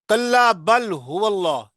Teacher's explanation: اللہ کے لام کو موٹا پڑھیں گے موٹا پڑھیں گے